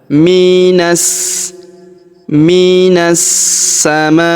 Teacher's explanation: alif dan lamnya tidak dibaca karena huruf na langsung sambung melompat ke huruf sa ya. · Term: Alif lam syamsiyah